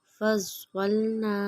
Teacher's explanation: حروف مدہ الف کی پہچان 1 فنگر کے برابر لمبا کریں گے